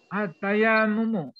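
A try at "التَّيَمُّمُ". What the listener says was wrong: Enggak ada yang panjang. Enggak ada yang panjang, enggak ada yang panjang. Berarti lagi ini, baca panjang pendek. At-tayamumu gitu. Jadi kalau mau istirahat di mimnya ya, mim yang pertama. Kalau mau istirahat, karena di situ kan ada syiddah. Syiddah itu artinya pertama bunyi mati, baru kedua bunyi hidup. Sehingga kita bisa istirahat dulu ketika bunyi mati. Bunyi mati itu kan sukun. Sukun itu kan bisa berarti berhenti. At-tayam.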